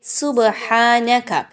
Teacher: سبحانک، با پر سکون کا نشان ہے، با پر آپ قلقلہ کریں گے، با کی آواز کو تھوڑا سا ہلا کے پڑھنا ہے